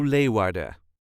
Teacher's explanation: All the letters will be pronounced, but as with many Dutch words, pronunciation of the last letter, the N, is not needed.